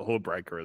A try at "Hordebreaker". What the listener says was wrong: Got to pronounce that D. Or you've got to pronounce the D.